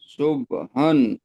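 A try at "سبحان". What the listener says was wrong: হাটা একটু চাপ হবে, সুবহা।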